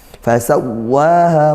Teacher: Fa sawwaha, wawu tasydidnya tekankan, waha mat tabi'i, keduanya satu alif panjangnya.